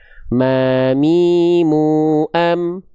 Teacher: Ketika teman-teman melafalkan huruf ini, lafalkanlah ya sebagaimana teman-teman melafalkan huruf M pada abjat alfabet ya. Mim itu persis dilafalkannya sama sehari-hari kita melafalkan huruf M, yaitu dengan cara menyentuhkan bibir atas dan bibir bawah kita. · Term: huruf mim